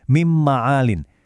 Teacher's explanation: Waktu nun mati ketemu mim, tulisannya memang min ma'alin, tapi huruf n-nya itu hilang total pas diucapin. Ganti jadi huruf m yang berdengung panjang